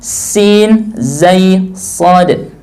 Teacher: ujung lidah dengan gigi seri bawah bagian dalam ada sin, zai, sad